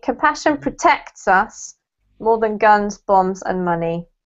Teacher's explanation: instead of putting the emphasis on us put the emphasis on protect